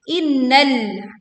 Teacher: inna nun bertasydid, kita baca dengung dengan sempurna